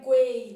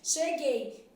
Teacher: quando eu vou para cheguei, esse U não é pronunciado.